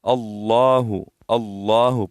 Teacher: लफ्ज अल्लाह यह जो है पूर पढ़ी जाए